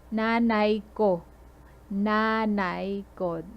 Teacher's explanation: Notice the stress is on the na.